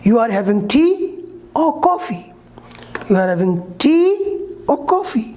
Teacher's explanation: tea rising coffee falling · in rising falling the intonation rises and then falls for choice list unfinished thoughts and conditional sentences in how many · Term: rising falling intonation